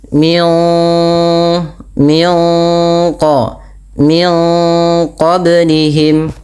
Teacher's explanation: suara nunnya disamarkan kepada makhraj daripada huruf qaf yang berada di pangkal lidah kita